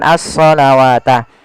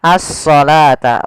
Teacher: kita baca dengan asalawata tapi di sini kita bacanya dengan asalata wau di sini dianggap tidak ada